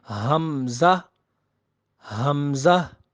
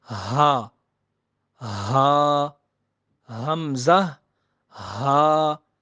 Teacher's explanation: Deepest part of throat, یعنی حلق کا وہ آخری حصہ، یعنی وہ آخری حصہ ہے جو سینے کی طرف ہے، یہاں سے یہ 2 حروف ادا ہوتے ہیں۔